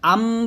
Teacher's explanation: দুই ঠোট মিলে গুনাটা করতে হবে। তবে পুরোপুরি মিলবে না।